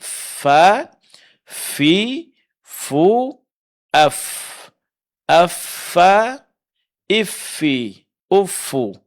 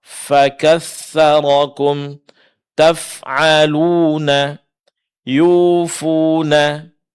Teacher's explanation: menjelaskan sifat hamas yang ada di huruf fa, yaitu pengucapan huruf yang disertai keluarnya angin